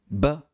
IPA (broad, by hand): b